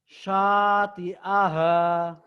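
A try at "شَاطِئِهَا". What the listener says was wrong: Bapak, shinnya jangan monyong ya. Bapak masih kebayang nggak kalau nyikat gigi bagian bawah atas dimonyongin apa dibuka lebar mulutnya? Enggak, dibuka lebar. kalau monyong itu kalau bersiul. Itu shod ya. Ini buka lebar. Sya. Jadi mulutnya jangan dimonyong.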